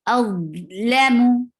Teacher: For dhamma, circle your lips well, and lam is short and mim is short.